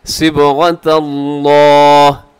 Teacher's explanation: वक़फ़ करते हुए आखिर में हाँ को साकिन कर देंगे।